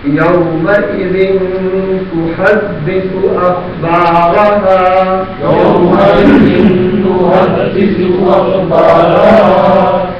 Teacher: يومئذ پر اخفا ہوگا غنہ کریں گے